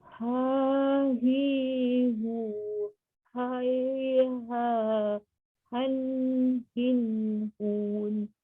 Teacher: Huruf ha dia istifal. Ha istifal, lidah ke bawah.